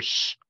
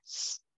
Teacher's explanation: That's a really important cue for distinguishing, say, S from esh. You can hear sh is lower than s.